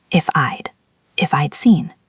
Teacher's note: Make sure you are making that soft d sound. Your tongue should tap the roof of your mouth just behind your teeth.